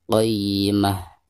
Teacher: Adapun cara membaca ta marbutah di sini apabila diwakafkan maka suara ta marbutah tersebut berubah menjadi ha sukun